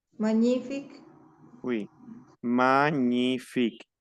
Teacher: la g y la n se transforma en una eñe ahí ya no existe la g no existe la n